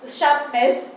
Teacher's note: Ness is a nasal sound, and just before that nasal sound it is a plosive sound p. So that p is actually heard as a nasal consonant. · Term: nasal plosive